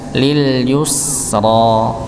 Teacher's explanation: maka yu pada huruf ya dhammah dimonyongkan, tapi ketika memasuki huruf sin sukun maka dikembalikan lagi. Lil yusra, lil yusra, ditarik nggih, ditarik.